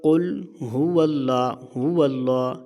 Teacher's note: ہو اللہ، اتنا کھینچتے ہیں، اس کو ہو اتنا نہیں کھینچنا، کیونکہ ہا کے اوپر پیش ہے، تو پیش کو بغیر کھینچے بغیر جھٹکا دیے معروف پڑھنا ہے